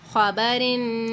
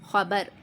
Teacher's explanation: خبرن میں دیکھیں باریک پڑھا ہے، اور جب میں نے خبر پڑھا تو پھر میں نے را کو یہاں پر موٹا ادا کیا ہے